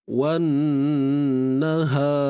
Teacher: Wan naha, ha pangkal kerongkong, bukan ha pedas.